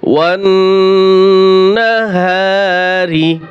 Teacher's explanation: ওয়াও নুন জবর ওয়ান, ওয়াজিব গুণ হবে, নুনের উপরে তাসদীদ রয়েছে, ওয়াজিব গুণ হবে।